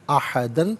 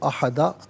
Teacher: ربی ہی احدن، یہاں وقف کریں گے تو احدہ پڑھا جائے گا، کیونکہ 2 زبر کی تنوین وقف میں الف سے چینج ہو جاتی ہے